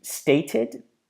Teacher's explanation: The first one is with T plus ED, and the second one is with D plus ED. Now, if we have the word state and we're turning it to stated, you can even hear there that I'm adding this noise, the id noise.